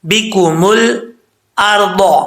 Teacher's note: جب لام کے مخرج میں زبان لگے تو وہیں پہ آواز جم جائے، لوٹنی نہیں چاہیے